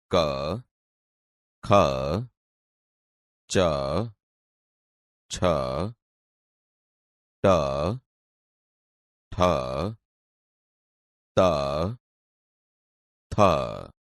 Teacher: બાળ દોસ્તો, હવે આપણે અઘોષ ધ્વનિ અને ઘોષ ધ્વનિ વિશે જાણીએ. અઘોષ ધ્વનિ નાદતંત્રી મહદ અંશે અલ્પ માત્રામાં એટલે કે અકંપ અવસ્થામાં કંપે ને જે ધ્વનિ ઉત્પન્ન થાય તે અઘોષ ધ્વનિ તરીકે ઓળખાય છે.